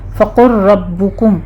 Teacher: لام اور را چونکہ ہم مخرج حروف ہیں تو آپ نے اس کو ادغام کر دینا ہے، لام کو را میں مدغم کر دینا ہے۔